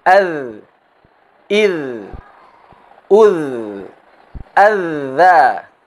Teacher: dengan menyentuh ujung lidah kita ke tepi gigi seri depan atas kita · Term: dhal